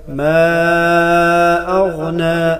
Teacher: ما اغنا تین الف کے برابر کھینچ کر پڑھا جائے گا. ما اغنا، غین کو گلے کے وسط سے ادا کریں گے جو منہ کی طرف ہے